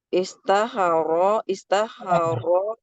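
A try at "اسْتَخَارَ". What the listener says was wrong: Istakha panjang.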